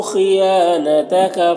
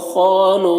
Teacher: خا حروف مستعلیہ میں سے پر پڑھیں گے، یہاں پر الف مدہ ہے، ایک الف کے برابر کھینچیں گے۔ یہاں پر واو اور یہ دونوں الف میں کوئی حرکت نہیں ہے، اس کو نہیں پڑھنا ہے۔